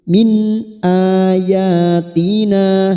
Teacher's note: nun sukun bertemu Hamza Idhar halq kita baca jelas tanpa mendengung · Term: idhar halqi